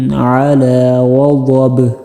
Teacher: وقف کریں گے تو آخر پر با پر قلقلہ ضرور کرنا ہے